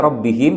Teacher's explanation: ra ini sudah jelas ya, karena dalam keadaan fathah dia dibaca mufakhama atau tebal